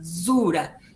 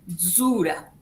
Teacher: La D casi no se siente, zura. Zura la taula.